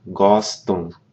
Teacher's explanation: you don't pronounce the m what that does is it nasalizes the preceding vowel